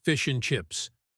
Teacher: The D and the A disappear and we are left with just the linking sound.